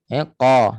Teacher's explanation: Okey, kemudian qaf, huruf qaf, makhrajnya pangkal lidah sentuh pada langit lembut dekat-dekat anak tekak. Qa, jangan berangin qa. Huruf qaf tidak ada angin. Kalau bunyi berangin menghampiri bunyi kaf. · huruf q tidak ada angin kalau bunyi berangin menghampiri bunyi Kaf